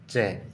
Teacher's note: तो स्पर्श संघर्षी व्यंजन है च